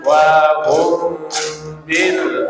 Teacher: Mim sakin meeting 'ba' read vaguely with a hum for two beats, called ikhfa syafawi. · Min bertemu ba, dibaca samar dengan dengung, dua ketukan disebut ikhfa syafawi.